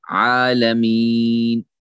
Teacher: आइन भी साफ पढ़ा जाएगा, हमजा से नहीं पढ़ा जाएगा। और अलिफ मद है, यानी अलिफ मद के बराबर है, खड़ा जबर है आइन पे, आलमीन।